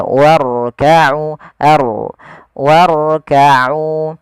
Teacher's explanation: Dan hati-hati jangan sampai huruf ro itu takrirnya berulang kali.